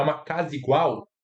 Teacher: Você pensou que é uma casa igual, mas esse a foi apagado. Por quê? Porque o sand vocálico é quando uma palavra termina em vogal e a outra palavra começa em vogal e essas duas vogais vão se juntar e ocorrer alguma coisa entre elas.